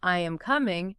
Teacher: if you're making a statement, I am coming, it goes down.